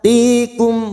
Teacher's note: Tikum, mim sukun bertemu fa, idhar safawi. Mim sukun dibaca jelas tanpa mendengung.